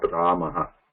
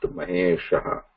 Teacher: it has no visarga, like it is not Ramaha, just Mahesha